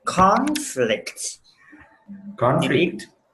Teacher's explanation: you need to stress on the first syllable not the second one